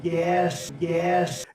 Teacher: raising as we call it raising the vowel that's in the word trap